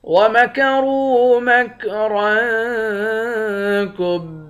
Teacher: را کو واو کے ساتھ ملا کر ایک الف کے مقدار کھینچیں گے، را کو موٹا بھی پڑھیں گے۔ یہاں پر بھی را کو موٹا پڑھیں گے، اس را کے اوپر دو زبر ہے، یہاں اخفا کریں گے۔